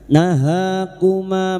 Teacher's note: naha alif kecil di atas ha dua harakat kita panjangkan nahakuma ma fathah diikuti alif dua harakat kita panjangkan mad thabi'i